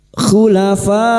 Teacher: Mad wajib muttasil lima harakat kita panjangkan.